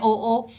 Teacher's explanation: ओ जब बोलते हैं तो ओ का राउंड शेप हो जाती है होठों की भी। तो कंठ और ओष्ठ दोनों को मिलाकर बोला जाता है